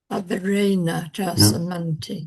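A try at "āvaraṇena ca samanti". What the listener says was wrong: No, done it again. I know it's a bit unnatural to us in English to talk averena because you want to stress the a of ena slightly. So the preceding vowel, by the natural phonetics of English, we would naturally want to shorten.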